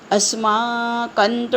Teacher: अस्माकमच्या कवर अनुस्वार आहे आणि पुढे त आला आहे. मग त वर्गातलं शेवटचं अनुनासिक न येतं म्हणून अस्माकमच्या अनुस्वाराच्या इथे न लिहून घ्यायचा हलंत.